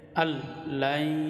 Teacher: তাড়াতাড়ি গুণা ছাড়া স্পষ্ট মিলায়া আল লাই। এখানে নুন সাকিনের পরে ঈদগাম বেলাগুন্নার হরফ হচ্ছে লাম, বেলাগুন্নার অর্থ হচ্ছে গুন্না সারা মিলে পড়া।